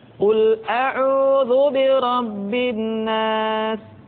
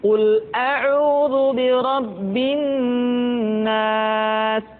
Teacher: ditahan suaranya ketika mengucapkan nun tasydid seperti ini.